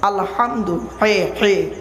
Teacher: গলার ভেতর থেকে হেটা উচ্চারণ হবে